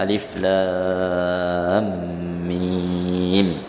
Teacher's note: Susunan hurufnya terdiri dari 3 huruf dan huruf terakhirnya diidghamkan dengan huruf yang selepasnya. Seperti idgham mim kepada mim. Idgham ini berlaku pada ejaan huruf saja, pada ejaan huruf saja. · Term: mak lazim harfi muthaqqal